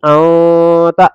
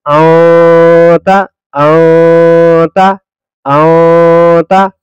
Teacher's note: انتا نہیں، آتا، ناک میں جائے گی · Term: اخفاء